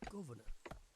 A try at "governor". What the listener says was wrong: There, you see, not proper Yorkshire, because he put a middle syllable in governor. Governor. I refuse to believe any actual person from Yorkshire wouldn't just pronounce it governor.